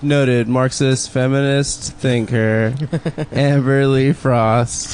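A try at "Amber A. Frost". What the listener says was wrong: You said her name wrong again. know, he said Lee. said Lee.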